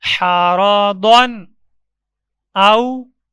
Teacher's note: اظہار کرتے وقت تنوین پہ رک کر پڑھیں گے تو نون ظاہر ہوگا